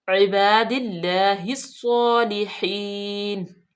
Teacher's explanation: इबादिल्लाहि स्सालिहीन, हा को स्वाद में मिलाएंगे, स्वाद मुस्तालिया में से है, पुर भी पढ़ा जाएगा, स्वाद पे फतह इशबाई है, इसको खींचेंगे भी, और स्वाद मुशद्दद है, इसको सख्ती से भी पढ़ेंगे। इबादिल्लाहि स्सालिहीन, लाम बारीक जेर है और या मद्दा या सकन माकबल मकसूर, तो या मद्दा होगी, इसको लंबा करेंगे।